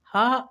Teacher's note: हा अंतस्थ नहीं है, यह ऊष्म व्यंजन है